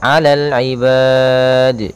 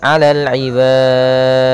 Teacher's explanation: kita memanjangkannya boleh 2 harakat, boleh 4 harakat, boleh 6 harakat. Maka alal ibad itu 2 harakat. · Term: mad arid lis-sukun